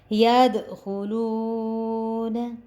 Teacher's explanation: یہ دال کے اوپر ہم نے کلکلا کیا کیونکہ دال کے اوپر جزم تھی. یہ حرف کلکلا ہے واو حرف مدہ تھا اس وجہ سے ہم نے اس کو تھوڑا سا کھینچا.